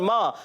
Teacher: एक अलिफ खेंच कर अदा करना है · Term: अलिफ मद्दा